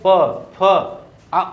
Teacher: ओठ एक दूसरे से देख रहे हैं, स्पर्श कर रहे हैं, तो ये ओष्ठ व्यंजन हुए